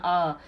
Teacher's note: आप जीभ के बीच से बोल रहे हैं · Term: मध्य